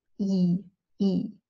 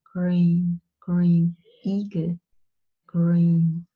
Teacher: with the English sound you have a little bit of an intonation wave on it and it's not as tense you don't tense your muscles you don't spread your lips Bingle